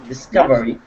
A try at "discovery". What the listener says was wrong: Discovery. Be careful with your R. You rolled your R when you read it, but that's okay. Discovery.